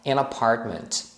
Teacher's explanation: esse an sempre é falado junto emendado com a palavra seguinte